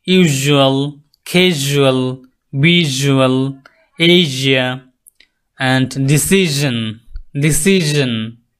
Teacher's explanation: Post alveolar sound. The tongue touches the back of the alveolar ridge. Same position.